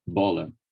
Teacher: for me to articulate the b in portuguese i i add much more voicing than i would do in english